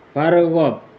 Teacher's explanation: hukumnya ra tafkhim yang kemudian dibaca tebal